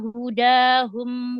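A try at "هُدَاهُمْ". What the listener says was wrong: Majukan lagi makhraj huruf dal.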